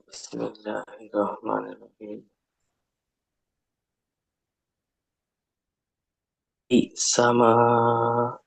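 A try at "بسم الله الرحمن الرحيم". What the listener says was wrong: হুম, মা টান হবে না।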